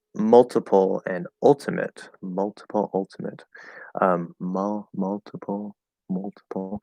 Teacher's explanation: The way that I say these two words is actually probably more of an L-colored high schwa, which is that horseshoe shape, or I think it's the omega symbol.